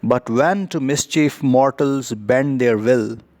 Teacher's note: rhyme together and uh I Amic pentameter here means that uh an unstressed syllable is followed by a stressed syllable uh there is no stress on but but on when and · There is no stress on but on when, and then there is no stress on to, the stress falls on mischief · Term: iambic pentameter